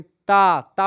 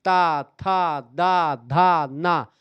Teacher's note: देखें ता ता बोलेंगे तो जीभ आपकी दांत से टकराए गी ता था दा धा ना सब में जीभ आपकी दांत से टकराती है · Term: दंत व्यंजन